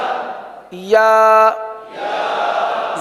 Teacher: जबान का दरमियान और तालू का दरमियान